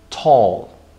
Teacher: T can be aspirated like in the word tall. What we articulate exactly is not the T, but an aspirated T.